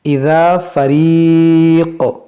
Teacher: قاف کو ہم ساکن کریں گے تو اس میں کیا ہوگا؟ قلقلہ، اذا فریق، اس طرح سے، اور پھر اعادہ کریں گے کیونکہ یہاں پر کوئی وقف نہیں ہے۔